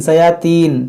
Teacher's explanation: तीन नहीं है, ती है, ती, ये मोटा करेंगे